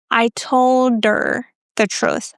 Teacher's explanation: Very often we drop the H and you might hear er.